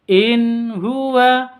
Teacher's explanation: nun mati bertemu dengan ha, cara bacanya jelas, terang, tidak boleh didengungkan. In huwa, tidak boleh seperti itu ya.